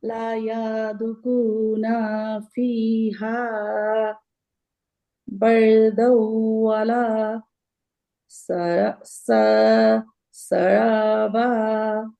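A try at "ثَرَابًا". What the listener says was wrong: এটা সা। নোক্তা তিনটা থাকলে কি হয় এটা? থা এটা? হ্যাঁ, সারবা।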